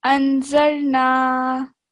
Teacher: Here is an alif madda. It gets stretched for 2 seconds